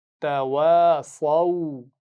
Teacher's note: واو کو صاد سے نہیں ملائیں گے. دیکھیے واو پر زبر ہے، اس کے بعد الف ہے اور اس کے بعد صاد پر اگر جزم ہوتی تب ہم واو کو ملاتے صاد سے. · اگر اس سے پہلے زبر ہوتا تو ہم اس کو بھی مدہ پڑھ لیتے، لیکن کیونکہ اس سے پہلے واو پر جزم ہے اور وہ پچھلے حرف کے ساتھ مل کر واویلین بن رہا ہے تو آخر میں یہ الف خالی رہ جائے گا، یعنی نہیں پڑھا جائے گا